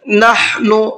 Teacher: ہا کو حلق سے نکال کر کے پڑھنا ہے اور نون کو کھینچنا نہیں ہے، جلدی پڑھنا ہے نون کو